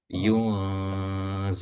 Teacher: nun sukun yang bertemu dengan huruf zai, itu baru yang dibaca dengung.